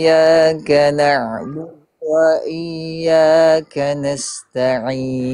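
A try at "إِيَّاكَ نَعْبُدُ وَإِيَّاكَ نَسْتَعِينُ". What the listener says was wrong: sedikit lagi Bang kuatkan dia bertasdirnya diulang lagi mohon izin dikuatkan lagi dia bertasdirnya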